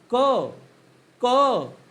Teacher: म्हणजे कसं, कठोर व्यंजनाचा उच्चार क चा उच्चार करत असताना आपल्या गळ्यात कंपन होत नाही, कंपन होते का नाही, म्हणून त्याला अघोष म्हणायचं. · कठोर व्यंजनाचा उच्चार करत असताना श्वास जास्त वापरावा लागतो. क क क म्हणत असताना फुफ्फुसातील हवा जास्त बाहेर फेकावं लागतं. म्हणजेच काय, कठोर व्यंजनाचा उच्चार करत असताना श्वासाचा वापर जास्त होतो, म्हणून त्या कठोर व्यंजनाला श्वास व्यंजन असं सुद्धा देखील म्हटलं जातं. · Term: अघोष व्यंजन